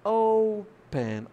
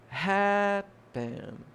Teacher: a sílaba tônica é a primeira